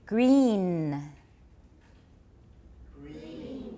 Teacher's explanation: This is a very long E. The N is just a little bit at the end.